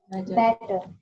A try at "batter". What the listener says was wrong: Batter. It's not better. It's not better. It is not butter. It is batter. ठीक है, bat, B-A-T, bat, B-A-T, batter. सबको हमने सुना, everybody was saying either better or butter, but it is batter.